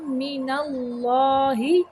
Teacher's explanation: اللہ کا لام موٹا پڑھیں گے